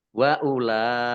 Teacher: lam fathah berdiri mat tobi'i, tetapi karena bertemu dengan huruf hamzah dalam satu kata, maka menjadi mat wajib muttasil. Harus dibaca panjang 5 harokat.